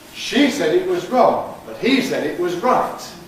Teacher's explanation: Contrast of pronouns, _she_ and _he_ and contrast of _right_ and _wrong_.